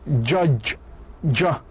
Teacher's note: elives there is a slightly resisted flow of Air B afriat total closure of the speech organs and air is released with a friction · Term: affricates